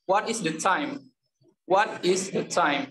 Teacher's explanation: The T sound was dropped and the vowel sound before it closed at the glottis. Jadi the T soundnya itu agak ditekankan sedikit. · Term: glottal stop